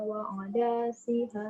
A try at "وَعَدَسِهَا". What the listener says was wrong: Dal pendek.